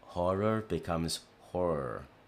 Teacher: the two RS kind of run together and the vowel sound that comes between them almost disappears